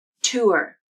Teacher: The way I've just pronounced tour definitely uses the OOR R-colored vowel. OOR. Tour.